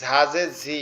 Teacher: ঝাটা উচ্চারণ হবে এই ঝাজে ঝি, এটা হবে জিহ্বার আগার নিচের দাঁতের আগার সঙ্গে